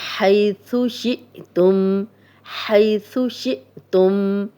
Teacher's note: حمزہ پہ جب بھی حمزہ پہ جزم ہو تو جھٹکے سے پڑھا جاتا ہے